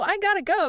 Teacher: The T sound often merges and shifts to sound like a quick D or a light flap of the tongue.